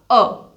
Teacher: जब हम अ इस स्वर का उच्चारण करते हैं तो जीभ का मध्य भाग प्रयोग में लिया जाता है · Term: मध्य स्वर